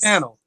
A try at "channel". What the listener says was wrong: Just open your mouth. Open your mouth. Don't say it with your teeth closed. Because you don't open your mouth. You just open your mouth.